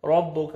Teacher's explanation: ربک، را کو مرزبر ہے، را کو اپنے موٹا کر کے پڑھنا ہے اور کاف کو باریک کر کے پڑھنا ہے